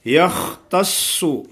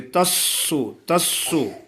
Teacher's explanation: خا موٹا ہے، سواد بھی موٹا ہے لیکن سواد پر شد ہے تو سختی سے